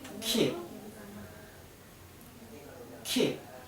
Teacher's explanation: your lip is slightly smiling, tense and not rounded, and your tongue is tense, high and far forward near the move of the mouth. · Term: E sound